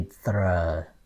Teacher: In the north you hear the R sound, clearer. But then in the south, well, they put it together and then say it sound like the CH, okay, j.